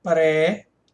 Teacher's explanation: O i tônico sozinho, formando sílaba sozinho, separado de uma outra vogal, isso é um hiato